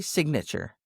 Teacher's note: But when I add the suffix A-T-U-R-E, it's signature. Now, the I goes from long to short, and you hear the G and the N.